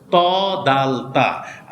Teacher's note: ত, দাল, তাটা সামনের উপরে 2 দাঁতের গোড়ার সঙ্গে লাগিয়ে, সামনের উপরের জিহ্বার আগা সামনের উপরের 2 দাঁতের গোড়ার সঙ্গে লাগে